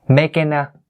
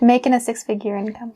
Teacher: I actually left out the g sound at the end